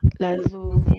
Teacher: zal tu makhraj dia hujung lidah tekan kat gigi dia, kat depan dia